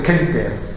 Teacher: On devrait le prononcer quinter, donc avec un C vélaire.